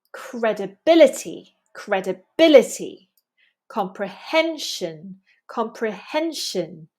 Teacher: Notice that these words come from Latin and we have penultimate syllable stress.